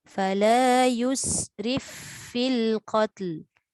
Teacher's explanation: Letak je fa tu gigi kita dekat bibir bawah.